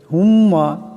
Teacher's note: হুম্মা, এখানে মিমের উপর তসদিদ আছে, এখানে গুন্না করিয়া পড়তে হবে।